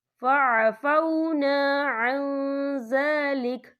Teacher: یہ دیکھیں فعفونا عن، یہاں نون ساکن ہے، نون ساکن کے بعد جو ہے زال آ رہا ہے، اور زال جو ہے اکفا کا ورڈ ہے، تو ہم یہاں اکفا کریں گے، نون ساکن کی آواز کو ناک میں چھپائیں گے.